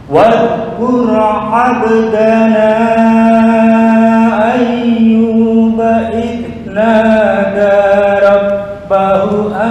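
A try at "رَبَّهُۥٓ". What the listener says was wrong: Panjang. Rabbahu 5 harokat.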